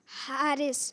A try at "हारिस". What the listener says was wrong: ये तो शीन हो गया, लग रहा है हारिश हो रहा है। हारिश है हारिस है? हारिस ठीक है भाई, हारिस ठीक है, सही कह रहे हैं जी।